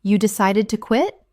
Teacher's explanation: Utilizing a rising intonation. This invites them to elaborate on their reasons.